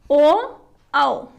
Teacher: इसका सूत्र है ओ दौ तोह कंठोष्ठम, अर्थात ओ औ, ओ और औ दोनों का उच्चारण स्थान कंठ और ओष्ठ दोनों है।